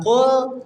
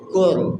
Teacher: jadi lamnya l-nya hilang, diganti dengan huruf ro, seolah-olah ada sidah gitu.